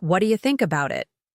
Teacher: with the main stress on think and it. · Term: natural English rhythm